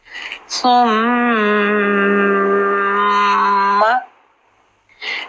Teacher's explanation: سا کو سین کی سیٹی سے بچانا ہے